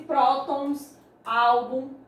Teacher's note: com som mais forte é a sílaba tônica é a penúltima sílaba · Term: paroxítonas